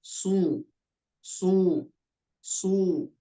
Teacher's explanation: huruf sod karena lidah bagian belakangnya naik sehingga membuat hurufnya terlihat lebih tebal daripada sin. Adapun shin itu tadi sudah tepat insya Allah.